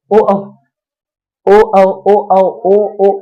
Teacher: अगर हम ओ औ की चर्चा करें, ओ औ ओ औ ओ औ ओ देखिए कंठ भी काम कर रहा है, ओठ भी काम कर रहा है।